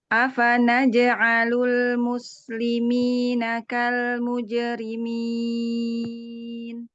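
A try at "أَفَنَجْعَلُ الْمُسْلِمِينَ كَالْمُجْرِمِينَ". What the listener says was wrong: Bagus. Naj'a, tapi jimnya agak ke hidung.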